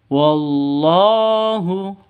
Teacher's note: Di sini ada lafdzul jalalah atau Allahu. Lafdzul jalalah itu panjang, kalau di depan panjang dua ketukan ya.